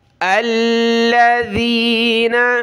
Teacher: ذال پر زبان نکالے، اس کو زا نہیں پڑھنا